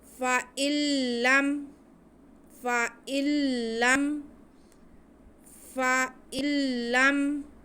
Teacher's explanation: لام حروف ادغام میں سے ہے۔ ادغام بلا غنہ، یعنی کہ غنہ کرنے کے بغیر ہی ہم نون کو لام میں ملا دیں گے۔ تو اب ہم جب نون کو لام میں ملا دیں گے تو ہم حمزہ کے بعد تقریباً لام ہی پڑھیں گے، نون اس میں مدغم ہو جائے گا، مل جائے گا۔